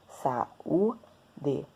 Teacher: o A tá perto do U, porém separados na hora da emissão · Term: hiato